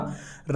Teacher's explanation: रा जब आप बोलते हैं दोस्तों तो जीभ एकदम लुढ़क रही होती है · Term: लुंठित